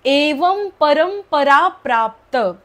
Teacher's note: जो अनुस्वार आहे त्याचा उच्चार म होतो कारण पुढे प आहे आणि जो दुसरा आहे अनुस्वार त्याच्यापुढे र आहे म्हणून मच उच्चार